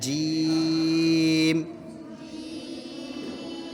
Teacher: زبان کے درمیان اور تالو کے درمیان سے جیم ادا ہوتا ہے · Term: حروف شجریہ